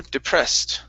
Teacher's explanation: the e d ending case will sound like a t on this word